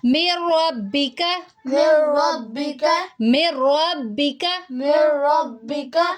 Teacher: لام اور را پہ غنہ نہیں کرتے، بغیر غننے کے ادغام کرتے ہیں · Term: ادغام بغیر غننے کے